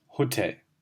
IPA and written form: hoˈtɛl (Hotel)